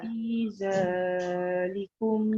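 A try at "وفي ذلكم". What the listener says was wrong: za jangan banyak, panjang dua je.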